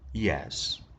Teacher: The reply of B indicates that he doesn't completely agree with what A said. So with full rise, yes means limited agreement.